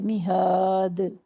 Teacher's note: دال پر قلقلہ کر کے ہم یہاں روک دیں گے